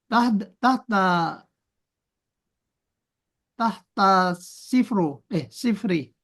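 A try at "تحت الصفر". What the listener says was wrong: Tahta sifar aja bacanya. Gak usah pakai tahta sif.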